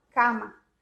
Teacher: você abre bem a boca e fala cama. Então, é o A aberto. Sempre. Não existe o A.